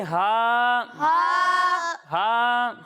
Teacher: جب ہم ہا کی ادائیگی کریں گے تو اسے حلق کے نچلے حصے سے پڑھیں گے